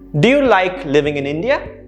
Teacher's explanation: notice how my intonation went up towards the end